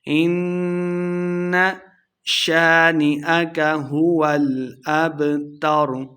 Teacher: نون مشدد ہو رہا ہے، غنہ کریں گے